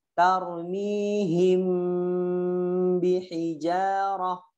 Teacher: Mim ketemu ba, bacanya dirapetin. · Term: ikhfa syafawi